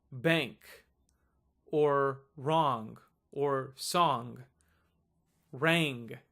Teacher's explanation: you're trying to say the N in the words like song or long you're ignoring the G but you're just keeping that nasal element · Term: nasal letter